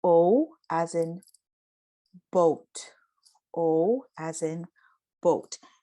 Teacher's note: notice how i said o and i had the two uh vowel sounds that would be the real pronunciation of boat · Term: diphthong